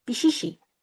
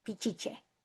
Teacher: because the Spanish couldn't pronounce the sh, they change it to a ch